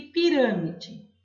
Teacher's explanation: é a antepenúltima sílaba a sílaba tônica mais forte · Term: proparoxítona